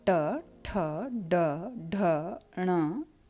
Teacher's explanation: इनके उच्चारण में जीभ का अगला भाग पीछे की ओर मुड़ करके अंदर उभरे हुए दांतों के थोड़ा पीछे की जगह से टकराता है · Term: मूर्धन्य